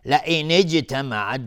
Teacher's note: جیم اینجا قلقله میخواد